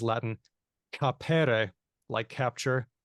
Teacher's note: the /k/ in CAPERE turned into /h/